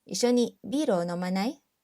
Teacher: we said it with a rising intonation to change it into a question